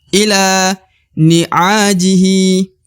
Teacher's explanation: Ila la dibaca 2 harokat ya, karena di depannya terdapat alif